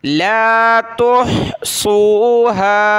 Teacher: ہا کو گلے سے نکالا، صاد کو موٹا کیا